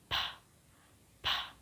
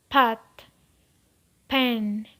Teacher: This sound is bilabial, that is produced with both lips.